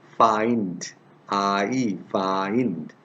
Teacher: this diphthong begins with an open vowel like ah